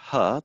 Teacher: sound ha the glottal fricative what we would see is that there'd be a wide open glottis the space between the vocal folds is wide and the vocal folds are far apart from one another to the point of not being able to enter into vibration